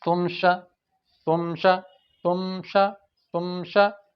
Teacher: میم ہونٹوں کے خشک حصے سے ادا ہوتا ہے، تمشا۔ تو دیکھیں تمشا، تمشا یہ غلط ہو جائے گا۔